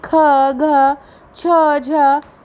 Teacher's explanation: जैसे कि ख, घ, छ, झ, ये सभी जो हैं वो महाप्राण हैं, क्योंकि द्वितीय हमने क्या पढ़ा, प्रथम और तृतीय जो है ना वो अल्प प्राण है, और द्वितीय और जो चतुर्थ वर्ण है ना वो आपके महाप्राण हैं · इनके उच्चारण में हंकार जैसी ध्वनि विशेष रूप से निकलती है। प्रत्येक वर्ग का द्वितीय, चतुर्थ वर्ण तथा सभी ऊष्म व्यंजन महाप्राण होते हैं।